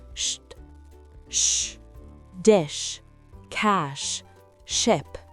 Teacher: Contrairement au CH, le SH est un souffle continu et fluide.